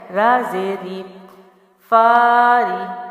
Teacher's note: را جو ہے را کے نیچے زیر ہے اور ہم نے پڑھا ہے کہ را کے اوپر زبر اور پیش ہو تو را موٹا یعنی پور پڑھا جاتا ہے اور را کے نیچے زیر ہو تو باریک پڑھا جاتا ہے